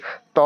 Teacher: ত হচ্ছে অল্পপ্রাণ আর অঘোষ।